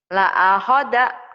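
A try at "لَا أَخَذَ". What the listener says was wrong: Pendek semua. La akhadha.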